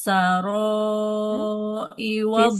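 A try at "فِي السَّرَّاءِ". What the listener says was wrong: Fissarro. Ada tasydid di huruf ro-nya. Fissarro.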